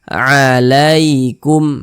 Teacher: berhati-hati ya ketika mengucapkan huruf lin yang terjadi pada huruf ya sukun. Jangan sampai condong ke huruf e.